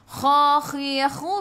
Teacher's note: biar ada angin, biar menggelegak